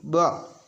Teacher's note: तो दोनों ओष्ठ मिल जाएंगे, फिर स्पर्श होंगे